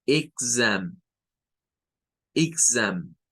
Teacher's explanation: Es con G. O sea, se suena con G y luego con zam. Exam.